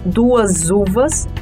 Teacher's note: temos o vozeamento do S por conta da vogal seguinte u que é vada Ou seja a vogal empresta o seu vozeamento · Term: fricativa vozeada